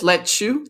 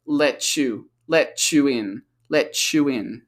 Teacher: In American English and Australian English, we have T plus Y is a ch.